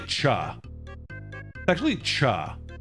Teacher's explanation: No, it's not really. It's the cha sound is really a T sound plus a sh sound put together. Sh is ta and sh pronounced at the same time.